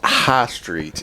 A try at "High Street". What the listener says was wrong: Pronounced the G. He pronounced the G in high.